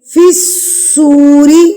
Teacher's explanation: فِی الصُّورِ، ایک تو صاد سیٹی والے حروف میں سے اس کی سیٹی آنی چاہیے